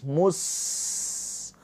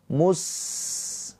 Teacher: Ada aliran nafas mus. Ada saofirnya yaitu berdesis